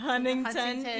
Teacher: You don't say the first T.